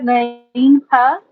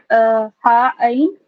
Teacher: सबसे ऊपर top of the throat है गईन हा, मिडिल पार्ट होता है हा आइन, और बॉटम ऑफ द थ्रोट होता है हमजा हा